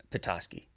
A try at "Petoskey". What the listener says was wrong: Okay, what's that fourth letter? That's an O. Why did you just say ah?